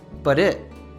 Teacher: instances of morphing t sounds here first the t of butt becomes a tap t because it is between two vowel sounds